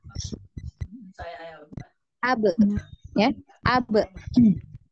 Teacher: bahwasannya makhraj dari huruf ba ini adalah keluar dari kedua bibir ya